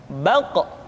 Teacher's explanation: Diucapkan dengan suara yang tebal dan dalam posisi sukun, maka terdengar pantulan suara. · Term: Qaf